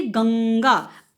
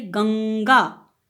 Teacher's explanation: अब ये बिंदी म की नहीं है, अंग की साउंड। तो देखिए अंग हमने यहाँ पे बीच में लगाया और बिंदी भी किसकी हुई, अंग की साउंड, बिंदी हुई यहाँ पे ये।